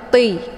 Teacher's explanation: Jadi permukaan sisi ujung lidah menempel di gusi bagian atas. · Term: hurufnya tebal